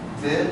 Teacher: when we say did it's going from a low frequency to a high frequency